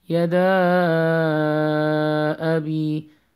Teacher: You have to elongate the alif, which is after the dal, four counts.